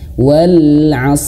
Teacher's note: Huruf shad dia memiliki sifat tebal dan juga dia mengalirkan napas.